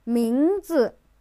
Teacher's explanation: 名字, the second and the fourth tone.